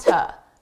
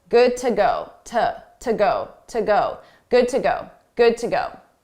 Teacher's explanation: to is a reduced sound, an unstressed sound